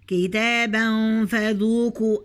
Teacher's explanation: هخفي التنوين هنا، هخفيه وأنا بنطقه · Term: الإخفاء